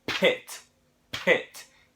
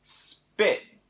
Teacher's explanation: if you put your hand there you'll notice that when you say spit there's not a big puff of air that comes out but when you say Pitt it's like